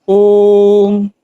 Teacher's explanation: प्लुत इसके उच्चारण में बहुत अधिक समय लगता है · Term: प्लुत स्वर